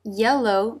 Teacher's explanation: mid-front part of the tongue touching the roof of the mouth. Tongue through the teeth for the L.